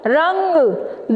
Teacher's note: आपको महसूस हुआ कि आपने इसका उच्चारण नाक के द्वारा किया गया है।